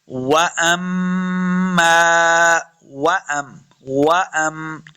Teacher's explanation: वाव को जब पढ़ेंगे दोनों होंठ गोल करने हैं। वअम, हमज़ा को मीम के साथ मिलाना है, غنہ کریں گے.